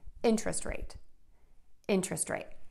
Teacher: And then quick little tip, if you are adding this to another word to make a compound noun, remember, first word is stressed, higher, louder, and longer vowel. Second word is unstressed, shorter and lower, and those words are linked together with no pause. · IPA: /ˈɪntrəst reɪt/